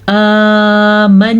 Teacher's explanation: کھڑی زبر کو کھینچ کے پڑھیں گے، نون کا غنہ ضرور ادا کریں گے